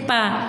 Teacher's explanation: ओष्ठ, क्योंकि इसके उच्चारण में दोनों ओठों की सहायता लेनी पड़ती है। दोनों होंठ आपस में मिलते हैं, जैसे पा बोलते हैं तो दोनों होंठ आपस में मिलते हैं, तो इसलिए यहाँ पर ओष्ठ पे निशान लगाएंगे।